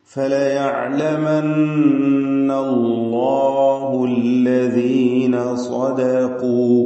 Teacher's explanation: സ്വാദിന് തഫ്ഹീം കൊടുക്കുക, തടിപ്പിച്ച് സ്വാദിനെ ഉച്ചരിക്കുക